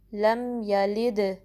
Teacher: کے نیچے جو کسرہ ہے اس کو دال سے ملائیں گے، دال ساکن ہے، دال پہ کلکلا ہوگا، یعنی کہ آواز پلٹ کر واپس آئے گی،